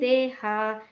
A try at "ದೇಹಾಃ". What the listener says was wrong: ಮತ್ತೆ ದೇಹಾಹ ದೀರ್ಘ ಹಕಾರ ಇದೆ ಅಲ್ಲಿ.